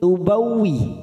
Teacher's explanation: waw yang bertasdid ya, jangan ditekan lama-lama, hanya masuk tubawwi.